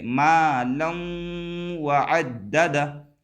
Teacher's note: जैसे इसी में आगे देखिए यहाँ पर आ रहा है, लाम के ऊपर देखिए मालम व अद्ददा में लाम के ऊपर 2 ज़बर की तनवीन है और इस तनवीन के बाद हरूफ यूमिन के 4 हर्फों में से वाव आ रहा है। तो यहाँ पर जो लाम को वाव से मिलाएंगे तो गुन्ना के साथ मिलाएंगे। मालौ व अद्ददा नहीं बोलेंगे, बल्कि मालम, लम, गुन्ना करेंगे, मालम व अद्ददा, इस तरीके से। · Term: इदगाम माल गुन्ना